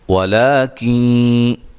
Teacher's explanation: یہاں نون ساکن کا ادغام مع الغنہ ہے